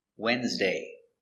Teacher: it's not pronounced like it's spelled the D is silent and the E is silent too